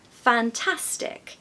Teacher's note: the second syllable is stressed so that you have a pattern that's unstressed stressed unstressed